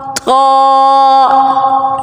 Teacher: Ta comes out from the tip of the tongue and the roots of the upper front teeth.